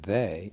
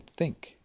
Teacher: The tongue touches the teeth for two frigatives. The voiced th as in they and the unvoiced th as in think